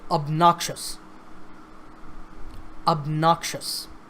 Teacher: obnoxious behavior now this word has three syllables of noxious and the stress is on the second syllable